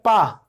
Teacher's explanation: अगर आपसे मैंने कही पा, तो पा आपने बोला तो आपने देखा कि आपके जो ऊपर के ओंठ हैं ओष्ठ हैं और नीचे के ओष्ठ हैं वो आपस में आके मिल गए